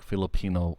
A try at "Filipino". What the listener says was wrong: yeah, I think you put the emphasis on the second I, so Filipino.